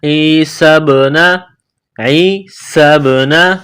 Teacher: با ساکن ہے، یہ حروف قلقلہ ہے تو یہاں با پر قلقلہ کریں گے